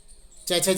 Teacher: च वर्ग, च छ ज हैं, यकार और सकार, इनका उच्चारण स्थान तालु है। अर्थात ये ऊपर वाले दांतों के ऊपर जो मांसल भाग है, उसमें जो हमें, जब हम जिह्वा के द्वारा ऊपर स्पर्श करके देखते हैं तो खुरदरा खुरदरा सा लगता है, उसे तालु कहते हैं।